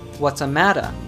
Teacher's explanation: with connected speech, the sentence, what's the matter, becomes, what's a matter, when pronounced in a natural way in English